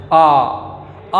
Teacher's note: आ वर्ण का उच्चारण मुख का द्वार पूरा का पूरा खुलता है, इसीलिए इसको हम विवृत्त ध्वनि के अंतर्गत रखते हैं।